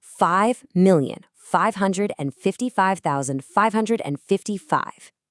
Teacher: And did you notice the word five itself has both sounds. It starts with the airy F and ends with a buzzy V.